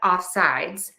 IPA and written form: ˌɔfˈsaɪdz (Offsides)